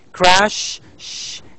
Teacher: It is a voiceless sound. It has no vibration.